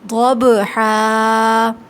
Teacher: یہاں اس کے بعد آ رہا ہے با، اور با ساکن ہے اور یہ حروف قلقلہ ہے، آواز نرمی کے ساتھ پلٹ کر آئے گی